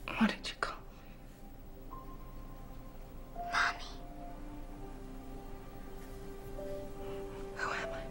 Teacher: il a une voix tout à fait posée dans la première partie, et puis là, sur la fin, j'ai un coup une voix soufflée, beaucoup plus chuchotée, beaucoup moins sûre de lui, parce que bah voilà, il a son module d'émotion qui s'est mis en route.